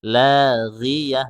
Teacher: Ghi itu huruf gha, huruf isti'la. Ketika dia kasrah itu dikurangi ketebalnya. Makanya bacanya la ghiyah bukan la ghiyah.